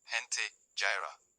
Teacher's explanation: Before e and i, it has a soft throaty h sound